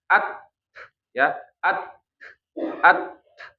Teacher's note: siddahnya tertahan kemudian hamznya keluar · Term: syiddah